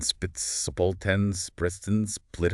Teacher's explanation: sp which starts like s but then needs that lip closure for p